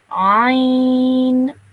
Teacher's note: So with this letter, you have to make a bit more of an effort to pronounce this letter correctly, because you have to really pronounce it from the middle of your throat